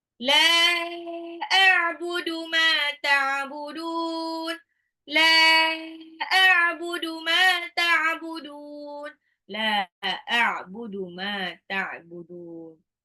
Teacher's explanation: Lamnya harus baca panjang karena lamnya itu kan lam alif ya panjang. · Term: mad jaiz munfasil